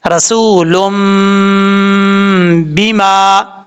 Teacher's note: اب یہاں پر لام کے اوپر دو پیش ہیں، آگے میم ہے چھوٹا، دو پیش کی تنوین کے بعد جب چھوٹا میم آ جاتا ہے تو سادہ لفظوں میں اگر سمجھنا چاہیں تو اس کا مطلب یہاں پہ غنہ کریں گے ایک الف کی مقدار، ایک الف کی مقدار سے زیادہ نہیں کریں گے اور نہ ہی کم کریں گے